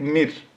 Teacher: Ra sakin for waqf after a zer or kasra, ra will be empty mouth sound.